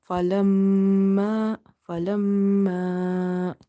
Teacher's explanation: So in this falamma, meme is having nasalization. So you will hold the sound of meme.